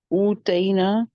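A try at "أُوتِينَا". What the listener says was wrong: ऊतीना, अब तईना नहीं होगा, देखें गौर से। ऊतईना तो नहीं बनेगा फिर ना। आतईना हमने दिया, ऊतीना हम दिए गए,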